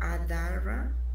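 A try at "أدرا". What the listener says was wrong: No, la D con sukun es nomás D, el sonido de sin nada. So aquí A, D, Ad, Ad. Ra. Y esto, no lo piensen de más, es nomás un alif. Por cualquier razón decidieron hacerlo así, pero es nomás un alif aquí.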